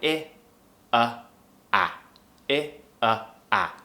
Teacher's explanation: you should feel when you're pronouncing them, tongue up high, I, a, going down